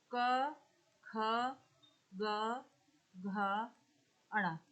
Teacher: क अल्पप्राण है और अघोष है ठीक ख महाप्राण है और अघोष है और कंठ है